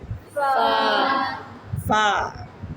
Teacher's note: सामने वाले दो दांत आपके होठों को लगेंगे